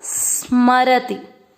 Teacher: अपने को स आधे को इस तरह से बोलना होता है, सिर्फ एक हवा जैसा निकलेगा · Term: आधा स